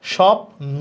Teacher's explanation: নিচে ব ঝুলে থাকে ওই বর্ণটা দুইবার উচ্চারণ করতে হবে আর শুরুতে থাকলে ব এর উচ্চারণ হবে না · যদি শব্দের শুরুতে বফলা থাকে তাইলে বয়ের উচ্চারণ হবে না, ব কোনো উচ্চারিত হবে না। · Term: ব ফলার উচ্চারণ, বফলার উচ্চারণ